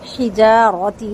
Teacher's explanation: تا کا زیر باریک اور تا کو کھینچنا نہیں ہے